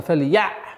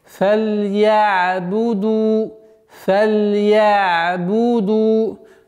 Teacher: Такой продолговатый, мягкий, скользящий остановка на звуке «айн», когда она с сукуном.